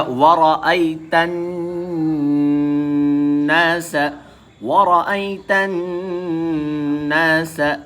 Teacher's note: تن، تا نون میں مل رہا ہے کیونکہ نون کے اوپر تشدید ہے، ہم نے آپ کو بتایا تھا نون یا میم کے اوپر اگر تشدید ہوتی ہے تو غنہ کر کر پڑھا جاتا ہے، تو پڑھا جائے گا ورأیت الناس، ورأیت الناس يدخلون فی دین اللہ.